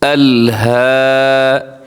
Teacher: کاف پیش کو ہوتا ہے، اس کو کو نہیں پڑھنا.